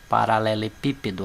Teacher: paralelepípedo, a sílaba tônica é a antepenúltima